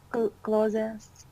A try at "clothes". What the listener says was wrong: It's actually clothes. So the E is silent. Clothes. Clothes. Clothes.